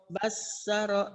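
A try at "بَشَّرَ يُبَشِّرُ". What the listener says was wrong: Shin. Kurang. Basyara yubasyiru. Basyara yubasyiru.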